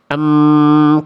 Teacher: Yaitu enggak cukup hanya menyentuhkan antar kedua bibir, tapi dan juga suaranya masuk ke dalam rongga hidung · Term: dengung